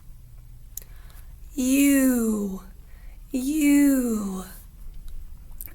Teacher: it looks like my lips are rounded in the shape of an O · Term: long u sound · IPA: /yu/